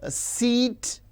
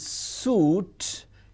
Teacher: E is front close unrounded whereas U is back close rounded · But the difference is, if you pronounce words like seat and suit, it is clearly visible, evident that E, it is front close, and U is back close.